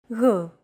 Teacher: Γ. It's like a very soft, continuous, and loosely held G, almost as if you're gargling, but don't make it sound too throaty. Γ. There's no such sound in English, but most people would transcribe this using the letter G, because that's the closest equivalent in English.